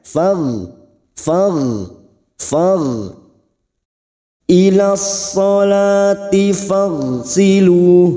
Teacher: Rikhwah ialah suara tidak tertahan atau terlepas ketika mengucapkan huruf. Masih ada sedikit aliran suara pada huruf gho, maka bunyinya far ila sholati fagsilu.